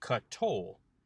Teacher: the schwa underneath the kof has become a vocal schwa